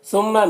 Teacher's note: میم مشدد غنہ کے ساتھ پڑھیں گے۔ لذین، یہاں پر یا مدہ ہے، ایک الف کے برابر کھینچیں گے۔